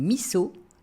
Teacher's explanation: La convention de transcription phonétique du japonais veut qu'un S se prononce S et non Z, même s'il se trouve entre deux voyelles